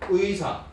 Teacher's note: 왜냐하면 첫 음절 왔기 때문에 첫 음절은 그냥 이중모음 의만 발음할 수 있습니다.